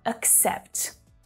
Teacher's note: So it's not accept, but accept, accept. So there's a stop on that k sound to help you ease into the next syllable. Accept. The first syllable is unstressed, right? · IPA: /ək'sept/, /əkˈsept/